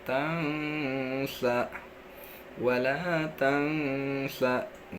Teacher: ifa-nya itu terletak pada kata tangsa, ya, dibacanya mendengung